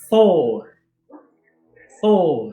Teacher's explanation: esse R, o R nórdico, ele é um R trinado. Você tem que tremer a língua no céu da boca.